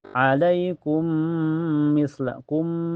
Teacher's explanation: Jadi ee hukumnya idgam mutamasilin karena ketemu dua huruf yang sama dalam sifat dan makhrajnya. Cara bacanya mim pertama dimasukkan ke mim yang kedua dengan sempurna. Ini juga bisa disebut idgham kamil ya karena masuknya dengan sempurna.